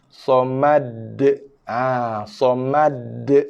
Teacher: Kalau kita baca somad, kita seolah-olah sudah menambah sabdu pada huruf dal.